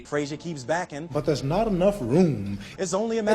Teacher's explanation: the way he lengthens a lot of those final n m sounds